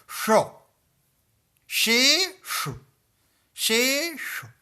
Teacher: हमारी जिह्वा और मूर्धा ये दोनों मिल करके मूर्धन्य श का उच्चारण करते हैं।